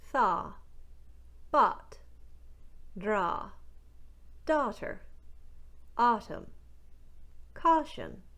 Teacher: The aw vowel sound found in words like all, ought, and awful becomes the wider, more relaxed ah vowel sound in Newfoundland. From aw, you're going to widen the corners of the mouth quite a bit and drop the jaw ever so slightly, going from aw to ah, aw, ah.